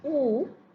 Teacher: It can be close rounded as in oo.